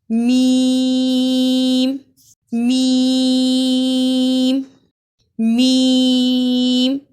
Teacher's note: मीम की अदा में दोनों होठों के बैरून खुश्क वाली हिस्से यानी खुश्की वाले जो हिस्से हैं दोनों होठों के उनको मिलाने से मीम अदा होता है · میم کی ادا میں دونوں ہونٹوں کے بیرونی خشک والی حصے یعنی خشکی والے جو حصے ہیں دونوں ہونٹوں کے ان کو ملانے سے میم ادا ہوتا ہے